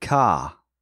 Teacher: Like most British English dialects, Cockney is non-rhotic. And what this means is that unlike Americans, Canadians, and Irish, they don't pronounce the R unless there's a vowel in front of it.